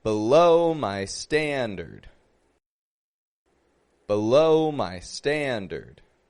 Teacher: The first syllable, B, has the schwa sound. The second syllable, low, is stressed. It's strong.